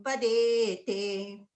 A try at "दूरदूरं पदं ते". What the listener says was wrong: Duram padamte. Did you have padete or something? Padam.